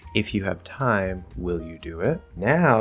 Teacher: the second part is a question but now it's not rise and then fall it's rise and rise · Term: rise and then rise